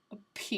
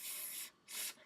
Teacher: there is a P, like a moment where the air is released